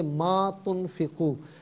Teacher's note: ما کو بھی ایک الف کی مقدار کھینچیں گے